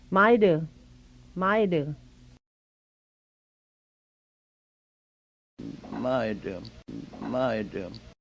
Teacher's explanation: see if you can hear the imploded d